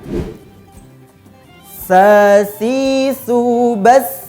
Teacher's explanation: ujung lidah atau ujung lisan bertemu dengan kedua gigi seri yang atas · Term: huruf sa